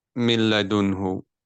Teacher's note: the ra and the lam, there is no nasal sound. You just move straight away. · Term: idgham without ghunna